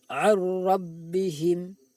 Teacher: Idgham bila hunnah berupa nun sukun bertemu ra. Bunyi nun sukun dimasukkan ke dalam bunyi ra tanpa didengungkan.